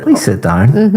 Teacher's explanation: my intonation is going up